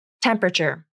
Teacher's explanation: three syllables and the a is dropped from the pronunciation